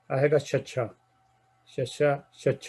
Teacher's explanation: ਜੀਭ ਦਾ ਵਿਚਕਾਰਲਾ ਹਿੱਸਾ ਪੂਰੀ ਤਰ੍ਹਾਂ ਬਿਲਕੁਲ ਤਾਲੂ ਦੇ ਨਾਲ ਲੱਗਦਾ ਹੈ, ਪੂਰੀ ਤਰ੍ਹਾਂ ਆਹ ਵਾਲੇ ਅੱਖਰ ਦੇ ਲਈ।